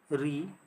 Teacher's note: ऋ मूर्धन्य स्वर है। मूर्धन्य से उच्चारित होता है।